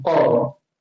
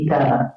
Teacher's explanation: Kalau kita tengok dia ringan. Kalau qaf tu nampak tebal, qaf. Kaf ni macam ringan sikit, kaf. Boleh?